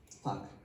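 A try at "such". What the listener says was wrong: So this is your typical problem with sh and ch.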